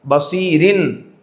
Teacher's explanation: را باریک ہوگی کیونکہ را کے نیچے زیر ہے